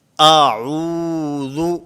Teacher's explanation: اعوذ، ذال کو پڑھنا ہے۔ ذال کی ادائیگی میں زبان کا تعلق ہوتا ہے، زبان یہ سامنے دانتوں سے ٹکراتی ہے۔